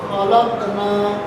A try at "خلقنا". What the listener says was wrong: کلکا صاف نہیں ہوا. تا ہے، تا ساکن ہے تو تا کو ہم 2 بار پڑھیں گے. یعنی 2 بار پڑھنے کا مطلب 2 بار اس کی آواز آئے گی.